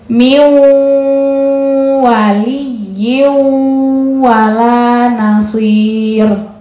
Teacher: Miu masuk ke waw dengan mendengung. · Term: idgham bil gunnah